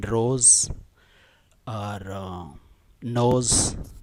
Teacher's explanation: The z sound like in rose or nose, this is also called a sibilant sound.